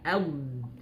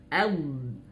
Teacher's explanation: suaranya mengalir karena dia huruf sifat rakhawah